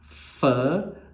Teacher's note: no caso do fã a gente percebe que existe uma participação dos lábios junto com os dentes